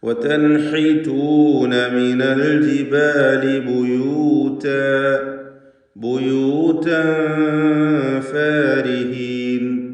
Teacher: തൻവീനും ശേഷം ഫാഉമാണ്, ഇഖ്ഫാ ഹഖീഖി നൽകി മറച്ച് മണിക്കണം. തൻവീനിനെ അവ്യക്തമാക്കി മണിച്ചുകൊണ്ട് ഉച്ചരിക്കുക.